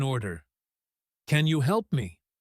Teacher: If you say it with a falling intonation, sounding bored or demanding, it sounds like an order.